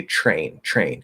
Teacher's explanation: physical mechanics of releasing the t and going into the r it's actually easier to sort of just slur it into a ch um blend it into a ch and then pull into the r